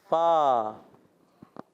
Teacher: نیچے والے ہونٹ کے تر حصے سے فا ادا ہوتا ہے